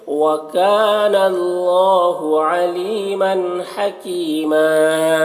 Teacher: حکیمہ یہاں پر بھی یا مدہ ہے اور وقف کی صورت میں ایک زبر کے ساتھ الف پڑھیں گے